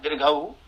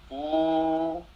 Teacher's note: उसको कैसे जानेंगे, तो जैसे हम लोग सामान्य गांव की भाषा में हर्षऊकार बोलते हैं, हर्षऊ, हर्ष ऊ जो है बोलते हैं ऊ। अब जब हम दीर्घ ऊ बोलते हैं, दीर्घ ऊ, तो उसमें दुगना समय हो जाता है ऊ, ये दीर्घ है।